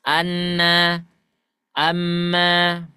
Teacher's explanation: ketika posisi ujung lidah mengarah ke langit-langit atas tapi ketika kita mengeluarkan suaranya Nah suaranya itu ada yang melalui rongga rongga hidungnya seperti itu Anna Amma pasti ada hidung ya kalau kita tutup